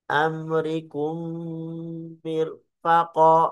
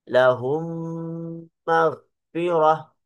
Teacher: tinggal dimasukkan mim yang pertama kepada mim yang kedua, mim yang sukun kepada mim yang berharokat. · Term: idgham mimi